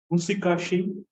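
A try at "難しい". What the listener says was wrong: Muzukashi. This is actually zu, right? Muzukashi, yasashi.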